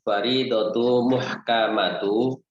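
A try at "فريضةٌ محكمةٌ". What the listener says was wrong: Faridatun muhkamatu. Bertanwin dua-duanya.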